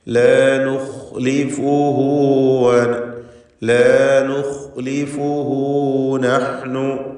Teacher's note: ഖാഇന് തഫ്ഖീം കൊടുക്കുക, തടിപ്പിച്ച് ശബ്ദഭാരത്തോടെ ഉച്ചരിക്കുക. ഇസ്തിഅലാൻ്റെ അക്ഷരങ്ങളിൽപ്പെട്ടതാണ് ഖാ.